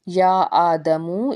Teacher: یا آدمو، یا کے اوپر آپ کو مد نظر آ رہی ہے، 3 الف کے برابر کھینچ کے ادا کریں گے، الف کے اوپر کھڑی زبر ہے، 1 الف کے برابر کھینچیں گے اسے۔